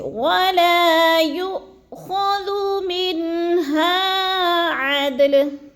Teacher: پڑھتے ہیں، جیسے وَلَا يُؤْخَذُ مِنْهَا، من پہ پھر اظہار ہے، نون ساکن کے بعد حروف ہلکی میں سے ہا آ گیا تو ادھر ہم نے غنہ نہیں کرنا، لفظ کو ظاہر کر کے پڑھنا ہے